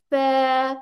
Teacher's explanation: rabbit वाला मुंह बनके फिर फ आदा होता है ठीक है दांत आगे रख के